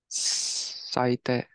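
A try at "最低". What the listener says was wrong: Saite. Perfect.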